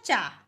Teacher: च का उच्चारण स्थान ओष नहीं है इसका उच्चारण स्थान है ताल